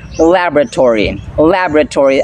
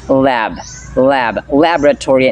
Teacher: as you can notice the accent falls in the first syllable